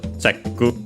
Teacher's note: it was accented on the che as expected